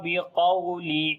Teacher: قاف کو موٹا پڑھیں گے، واو لین نرم پڑھیں گے